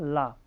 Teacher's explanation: ला एक पार्श्विक व्यंजन है। कैसा? जिसका उच्चारण हवा जीभ के पार्श्व अथवा बगल से निकल जाती है।